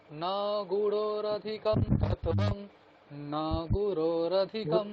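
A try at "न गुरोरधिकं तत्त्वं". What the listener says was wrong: দেখুন কি করছেন আপনি, বলছেন না গুরু, ন অনেকক্ষণ টানছেন, সেটা তো করলে হবে না।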